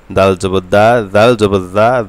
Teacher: দাল অবশ্যই পাতলা করবেন জিব্বার আগা দিয়ে।